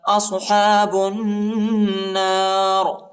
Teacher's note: صاد کو موٹا پڑھیں گے · با کو نون کے ساتھ ملائیں گے، الف اور لام نہیں پڑھا جاتا، اور ادھر غنہ بھی ہے